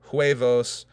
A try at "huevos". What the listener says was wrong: You don't pronounce the H. You don't pronounce the H.